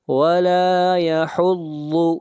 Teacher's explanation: ضاد کو موٹا پڑھیں گے، ضاد حروف مستعلیہ میں سے ہے،